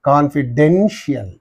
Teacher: the syllable preceding the suffix is Den therefore you say confidential